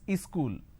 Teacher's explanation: Wherever there is a word that starts with the s sound, they add a e in front.